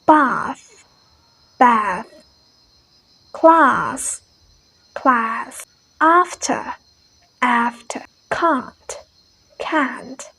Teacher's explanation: the british pronounces like ah ah ah the long vowel sound ah